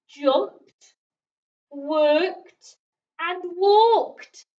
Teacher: Jumped, worked, and walked all sound like they end in a t sound.